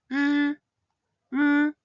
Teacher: And finally, the consonant R is pronounced as r, r. Note that the R sound is not a rolled R.